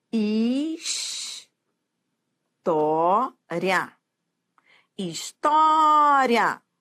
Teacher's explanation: E é um ditongo que vai da fraca para forte, ditongo crescente.